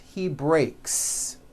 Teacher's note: when you put the word in the third person, he breaks. The s you add also remains unvoiced.